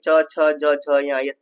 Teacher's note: च वर्ग में च, छ, ज य तालु से उच्चारण होता है